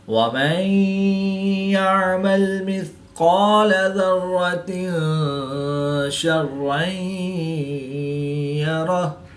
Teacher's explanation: را مشدد پر زبر ہے تو را کو پر پڑھیں گے. دو زیر کی تنوین کے بعد شین حروف اخفا میں سے ہے تو یہاں پر اخفا ہوگا یعنی غنہ زمانی کر کے پڑھیں گے